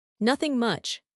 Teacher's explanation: When someone asks what did you do and I say nothing much, I usually say it with a falling sad tone.